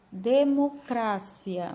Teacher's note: espanhol sílaba tônica cra · Em espanhol, a sílaba tônica muda, ela já é cra, a sílaba cra, e a pronúncia vai mudar também.